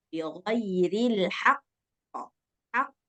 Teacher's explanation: jangan ada hamzah di belakang yang menyertai huruf qalqalah.